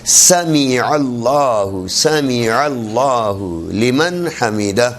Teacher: سمی میم زیر می ہے، میم زیر میں نہیں ہے عربی میں